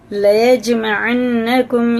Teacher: اور یہ جیم میں قلقلہ ہے، نون پہ شد ہے تو یہ غنہ کریں گے۔ قلقلہ کا مطلب ہوتا ہے اس کے مخرج ٹکر کھا کے الگ ہو جاتے ہیں، سخت ہوتا ہے۔